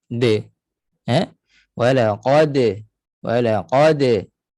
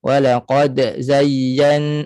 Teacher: Lantunkan bunyi dal, bunyinya de. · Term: qalqalah